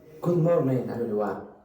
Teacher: very often Spanish speakers do not like that ing sound. So morning contains that ing sound. So they very often change it to n. So good morning, instead of good morning.